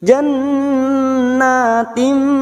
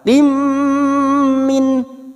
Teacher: Kasrah tanwin bertemu mim. Idgham bi gunnah. Siap masuk dan mendengung. Masuk pada huruf mim dan mendengung selama 2 sampai 3 harokat.